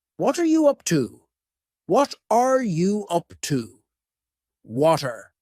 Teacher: the word what and are are creating a spoken contraction